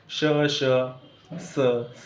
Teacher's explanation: तोंडातली हवा जी आहे ती कुठेतरी दातांच्या मधून घासून गेलेली असते श स मध्ये सुद्धा काय होतं हवा घासलेली आपल्याला जाणवते · उष्मे घर्षक म्हणजे याच्यामध्ये काय आहे घर्षक म्हणजे आपल्या तोंडातून जी हवा येत असते ती कुठेतरी घासून जाते. श म्हणताना काय होतं मित्रांनो तोंडातली हवा जी आहे ती कुठेतरी दातांच्या मधून घासून गेलेली असते.